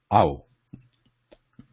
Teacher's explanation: au is combination of ah and ooh